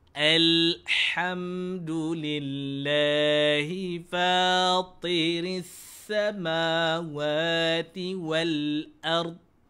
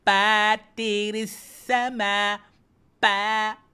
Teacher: Tetapi sebaliknya dia dibaca dengan bunyi fa. Gigi atas diletakkan kepada bibir di bawah. Jangan digigit gigi bawah jumpa atas.